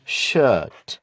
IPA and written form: ʃɜt (shirt)